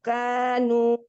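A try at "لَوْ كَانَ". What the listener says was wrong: Lau kana, bukan dilihat nih, bukan kanu tapi kana.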